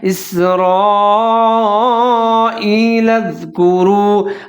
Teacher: یا بنی، آگے ہے اسرائیل اذکروا، حمزہ کے نیچے زیر ہے، سین ساکن ہے، را زبر الف مد، را کو موٹا کر کے پڑھیں گے، اور جو مد ہے وہ بڑی مد ہے، مد متصل کہتے ہیں، اس کو لمبا کر کے پڑھیں گے۔